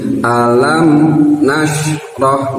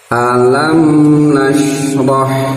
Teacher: mim itu bagian dari huruf tawasud yang mengalir ya setengah lancarnya tidak begitu lancar tapi tidak boleh terbutus seperti